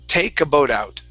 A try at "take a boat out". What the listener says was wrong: Okay, make sure to pronounce that K. You're saying take a boat. Okay, so it's take.